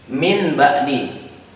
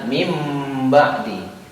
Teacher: Harusnya ini kita baca min ba'di ya, tapi karena ada nun mati bertemu dengan ba, maka ini hukum bacaan iqlab itu sendiri. Nun ini kita jadi ganti dengan mim ya.